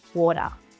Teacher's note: This concept where the t changes to a light duh is known as a T-flap or flapped T. · some Aussies might pronounce the t sound as more of a really soft duh